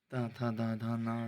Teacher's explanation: ता था दा धा ना से प्रारंभ शब्द का उच्चारण स्थान क्या है? दंत्य।